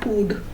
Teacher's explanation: Lip position may be described as being rounded as in hood